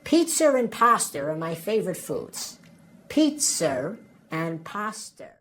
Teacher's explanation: word begins with a vowel, we add an extra R sound in between those two.